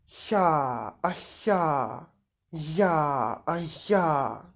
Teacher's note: Spółgłoski palatalne, podniebienne, palatal, na styku języka i środkowej części podniebienia.